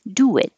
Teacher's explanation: when you have a rounded sound do and then an unrounded sound your lips go from small forward to back do it and it makes an invisible W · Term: intrusive W